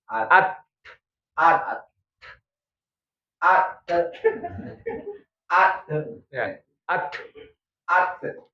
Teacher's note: ta itu ini ujung lidah ujung lidahnya ketemu dengan pangkal gigi seri pangkal gigi seri yang manaal pangkal gigi itu yang berbatasan dengan